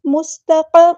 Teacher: سین کو باریک ادا کرنا ہے، سیٹی لے کر آنی ہے